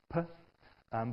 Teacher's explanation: So this is a symbol that every linguist around the world has agreed on to represent a bilabial plosive, a voiceless one, p. But in this case, it's at least similar to what we usually put in writing.